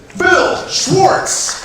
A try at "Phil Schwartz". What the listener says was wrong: Phil, it sounded like you said Bill Schwartz. Phil Schwartz, ladies and gentlemen.